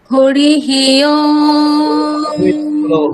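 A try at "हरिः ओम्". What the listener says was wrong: হরিহি নয়, হরি, হকার, হ।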